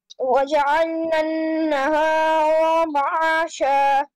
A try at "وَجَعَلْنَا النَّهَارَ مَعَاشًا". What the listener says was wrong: No stretching of raw, please.